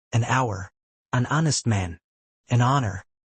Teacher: Even though these words begin with the letter H, the H is silent. So, they begin with a vowel sound and we use an. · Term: silent H